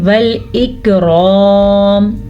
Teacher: آگے والاکرام، باریکی سے کاف کو جھٹکے کے ساتھ نہیں پڑھنا کیونکہ یہ باریک کاف ہے. را کو پر پڑھنا ہے کیونکہ را کے اوپر زبر ہے اور آگے الف مدہ بھی ہے تو کھینچ کے بھی پڑھنا ہے.